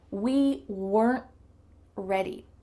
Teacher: My tongue is stopped at the top of my mouth. It's trying to make the T sound, but no air comes out. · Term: stop T